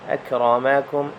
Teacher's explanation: را کو موٹا کریں اور دھیان دیں کاف بریک ہے، را موٹا ہے